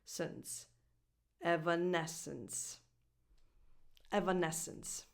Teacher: So this last syllable is unstressed, and so the vowel is a schwa.